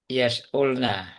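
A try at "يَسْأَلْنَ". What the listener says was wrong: Yas Alna. Jadi teman-teman harokatnya harokat tengahnya mudore itu nggak berubah ya. Jadi misalkan atasnya itu yas'alu, itu tetap sinnya sukun, hamzahnya fathah terus ke bawah kayak gitu. Yas'alu nggak berubah jadi yas'ulu atau yas'ilu gitu nggak.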